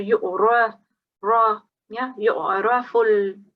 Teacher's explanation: So you make sure that if you've got fatha, you pronounce that fatha as well. And because it's a ra, and if a ra carries a fatha, you will make a bit of a rounded sound.